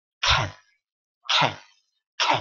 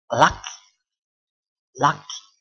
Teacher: pengucapan dari K itu meletup ya, atau aspirated dan yang tidak